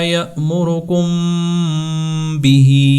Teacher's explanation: میم ساکن کے بعد جب حرف با آتا ہے تو وہاں پر ہم میم ساکن کی آواز کو ناک میں لے جا کر تھوڑا لمبا ادا کرتے ہیں، یعنی اس کے اوپر اخفاء کرتے ہیں، اور اس کو کہتے ہیں اخفاء شفوی۔